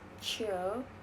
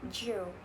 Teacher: Contrast a voiceless ch and voice j, both are post-alveolar affricates. They begin as stop and realize as fricative.